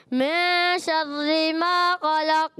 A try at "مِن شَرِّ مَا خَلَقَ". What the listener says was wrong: من شر ما را باری کریں گے. را باریک آپ سے نہیں ہوتی پر کر دیتے.